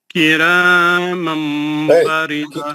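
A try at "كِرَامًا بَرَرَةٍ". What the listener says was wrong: کرامن را کو موٹا پڑھو. میں ابھی میں اب بھی بولا آپ کو راکو موٹا پڑا, یہاں پہ بھی دونوں را پہ زبر ہے, پھر اب ہر را کو میں آپ کو بولوں کیا؟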